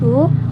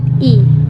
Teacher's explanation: Untuk bibir, yaitu bulat u dan tidak bulat i